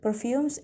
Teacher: which is unstressed syllable followed by stressed syllable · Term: iambic